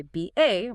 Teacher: you might hear a speaker from Manchester say BA with a short A